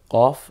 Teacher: কফটা জিওবার গোড়া থেকে একটু গম্ভীর আওয়াজে কফ